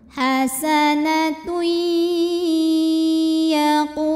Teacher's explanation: Tui ada idgham bi gunnah, karena ada tanwin dhammah menghadapi huruf ya, maka bunyi tanwinnya yang asalnya n masuk langsung ke ya. Jadi hasanatui masuk dan dengungkan.